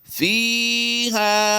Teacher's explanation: Same ہی پڑھا جائے گا کیونکہ اس کی کنڈیشن چینج نہیں ہوگی، تو پڑھا جائے گا فیہا، یعنی فا یا فی یا مدہ کو بھی ہم نے کھینچ دیا اور الف مدہ کو وقف کی حالت میں بھی کھینچ کر ہی پڑھیں گے۔